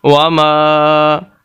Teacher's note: یہ میم کا حصہ ہے الف، اس وجہ سے یہاں پر الف مدہ ہے اور میم کو لمبا کریں گے